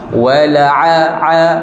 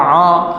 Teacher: Huruf ain ditekak bukannya di hidung. Dah. Wa la'a bukan a.